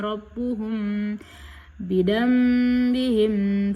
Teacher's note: Cara membaca ikhfa syafawi ini dengan cara samar antara mim dan ba pada bibir. Kemudian ditahan selama kira-kira dua harakat dalam ketukan seraya mengeluarkan suara ikhfa dengan pangkal hidung